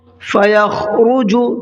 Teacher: خا کو حلق سے نکالنا ہے